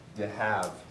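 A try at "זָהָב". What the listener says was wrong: You're speaking Aramaic. It's not duh, it's z. Zahav. Zahav. Zayin with a schwa, hey with a pathic, and a bait.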